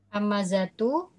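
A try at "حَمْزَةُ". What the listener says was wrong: Hamazatu ini harusnya Hamzah ya. Hamzatu sukun ya, huruf mimnya sukun ini harusnya.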